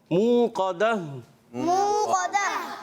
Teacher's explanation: منہ قدا میں ہم حرف مدہ کو ایک الف کھینچیں گے منہ, اور قاف کو ہم پر کریں گے, حرف مستعلیہ میں سے ہے.